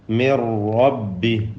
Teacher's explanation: മിൻ എന്നതിലെ സാക്കിന നൂൻ റായിലേക്ക് പൂർണ്ണമായും ലയിപ്പിച്ച് മണിക്കാതെ ഉച്ചരിക്കണം. ഇദ്ഗാം ബിലാ ഗുന്ന ഔ ഇദ്ഗാം ബിഗൈരി ഗുന്ന.